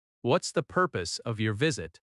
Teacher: In natural American speech, what is often becomes what's.